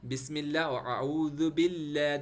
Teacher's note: کیونکہ اللہ سے پہلے جو نیچے با ہے یا میم ہے، دونوں میں بسم اللہ میں میم ہے، اعوذ باللہ میں با ہے، تو با اور میم دونوں کے نیچے زیر ہے، اس لیے اللہ کو چھوٹا پڑھیں گے، ترقیق پڑھیں گے